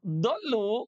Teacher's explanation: Huruf dod makhrajnya dari pinggir lidah kita dengan gigi geraham.